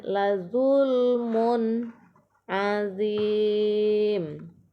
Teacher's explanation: tanwin bertemu dengan huruf ain, dibaca jelas, yaitu izhar halki.